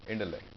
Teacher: The stress is on lect. Intellect.